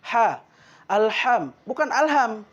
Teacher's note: yang pertama yaitu penyebutan ha ha itu di dalam makhorijul huruf keluarnya dari tenggorokan bagian tengah